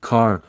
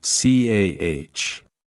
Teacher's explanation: the R sound is pronounced strongly in American English, but is often softer or omitted in British RP, especially at the end of words, eg car versus c ah.